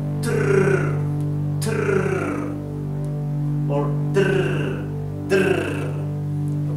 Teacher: it's a sound of the vibration of the tongue near your front teeth, okay? The upper front teeth. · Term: rolling R sound